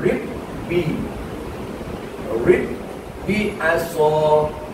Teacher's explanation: Ada dua huruf ba. Jadi awak tak boleh baca ribi. Kalau baca ribi, satu ba hilang. Dia kena rib bi. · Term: idgham